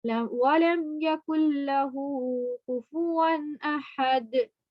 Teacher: कुल लहू, यहाँ देखा है आपने नून भी लिखा है, लेकिन नून के ऊपर जज़म है और नून के बाद तशदीद है तो काफ डायरेक्ट हमारा लाम से मिलता है, नून पर की वॉइस नहीं निकलती